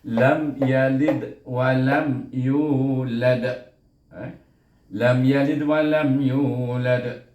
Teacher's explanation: dal tu bunyinya sughra, perlahan sikit, kelantunan ni perlahan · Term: qalqalah sughra